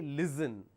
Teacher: It's not listen, it's listen. When you say listen, you are replacing the s with a z sound, which is incorrect.